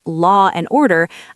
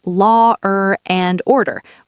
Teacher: For example, in British English, if I say law and order, I actually pronounce a little R sound in the middle. Law, and order. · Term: intrusive R